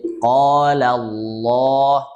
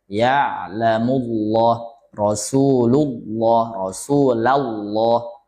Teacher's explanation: lafzul jalalah kalau didahului fathah atau damah jadi tebal